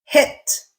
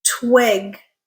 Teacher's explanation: I hope you heard the length distinction in words like hit versus twig